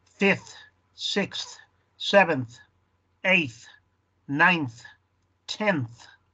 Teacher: No third, third. Y al final, fourth, que se oiga ese th